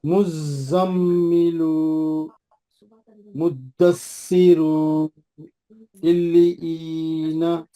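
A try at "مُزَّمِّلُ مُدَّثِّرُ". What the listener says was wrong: आखिरी में जो पेश है उसको नहीं खींचना। रू बोले तो अल्लाह दो हरकत है। नहीं, फिर खींच रहे ना आप।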